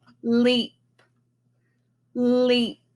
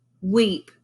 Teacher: I allowed my lips to come together and they were rounded